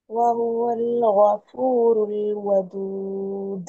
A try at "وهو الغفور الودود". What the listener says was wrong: வௌவல் வௌவல் அல்ல. வஹுவல் ஹா உச்சரிக்கும். ஹா மாறுது.